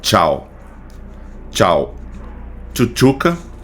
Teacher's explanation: Perceba que esse som do T pra gente é mais molhado, né? Enquanto no português ele sozinho, o sol t, ele é seco e o som molhado vai ser representado por esse símbolo aqui para justamente para dar essa distinção, tá bom?